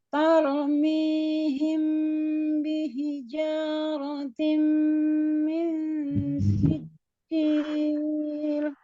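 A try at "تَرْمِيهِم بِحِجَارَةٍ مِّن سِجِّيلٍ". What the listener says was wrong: Resepnya ketika ro sukunnya itu lidahnya aja yang bergerak ya. Tar, bukan taur. Tarmi, ya lidahnya aja. Taknya tidak tebal, yang ro yang tebal, tidak tor.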